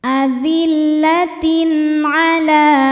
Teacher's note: tenggorokan yaitu huruf Ain maka tanwin dibaca dengan jelas bunyinya n